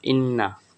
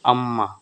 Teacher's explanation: খাইসুম নাকের বাঁশি হইতে গুন্নাহ উচ্চারিত হয়